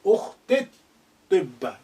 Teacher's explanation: So therefore, the lengthening E sound becomes slightly shortened.